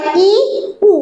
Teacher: উল্টো দিকে ই আর উ এই দুটো ধ্বনি উচ্চারণের সময় ই, উ মুখ একেবারেই খুলছি না, অর্থাৎ মুখটা কিন্তু ছোট হয়ে আসছে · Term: সংবৃত